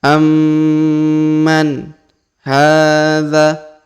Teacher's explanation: Perhatikan huruf ma berharokat tasdid, maka kita tahan dan kita tekan.